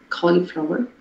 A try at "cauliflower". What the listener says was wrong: Yeah, en lugar de collie, dile cali.